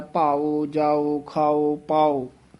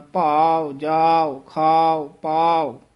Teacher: ਭਾਵ ਊੜਾ ਬੰਦ ਮੂੰਹ ਵਾਲਾ ਹੈ। ਭਾਉ ਅਗਰ ਉਚਾਰਨ ਕਰਾਂਗੇ ਊੜਾ ਖੁੱਲੇ ਮੂੰਹ ਵਾਲਾ ਉਚਾਰਨ ਹੁੰਦਾ ਹੈ